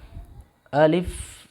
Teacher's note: अलिफ हल्क की खाली जगह से अलिफ अदा होता है